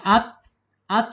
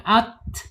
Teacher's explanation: Ketika ta ini sukun harus hamas ya. Sifatnya hamas mengalir.